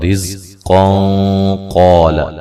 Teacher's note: ملانے کی صورت میں نون تنوین کا موٹا اخفا ہوگا